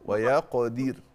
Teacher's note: عندنا قلقلة القاف وعندنا الراء مرققة